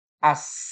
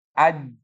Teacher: Kalau sa itu desusnya mengalir, ja itu mesti keluarnya dia tertutup.